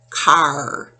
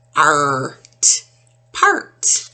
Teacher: the vowel changes the way it sounds and so it has an r sound to it so the first one we're going to talk about is ar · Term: r control